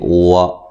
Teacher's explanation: واو کو ادا کرتے ہوئے ہونٹوں کو گول کرنا ہے، وا نہیں کرنا وا بلکہ وا۔